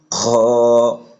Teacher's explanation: হলকের শেষ অর্থাৎ কণ্ঠনালীর শেষ হইতে জিহ্বার গোড়ার দিকে যে স্থানটা ওই দিক থেকে উচ্চারণ হবে, জিহ্বার গোড়ার একটু নিচে খ।